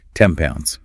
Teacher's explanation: Their mouth is just getting ready for the lip closure it needs for the P in pounds, and the sound just mutates as a result.